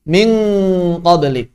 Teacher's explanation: ketika nun sakinah atau tanwin bertemu dengan kaf dan qaf, langsung makhrajnya terkunci sempurna. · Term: ikhfa ab'ad